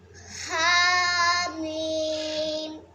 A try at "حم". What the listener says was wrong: شاباش، تھوڑا اور کھینچو، حامیم۔ شاباش، اس طرح مد کو کھینچ کے پڑھتے ہیں۔